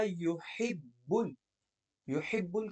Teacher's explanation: يحب کی حا باریک پڑھی جائے گی، با پہ قلقلہ ہے